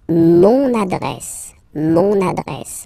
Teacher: you can hear now this little link, so you get to pronounce this N.